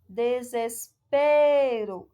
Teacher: Paroxítona, pois a penúltima sílaba é tônica.